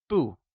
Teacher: bù means no and uses the falling tone